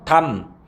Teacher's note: 담고 리을 미음 받침이지만 실제로 발음해보면 리을이 탈락해서 담, 미음으로 발음이 되지